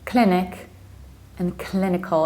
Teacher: And again, you reduce the ending, like in hospital, clinical.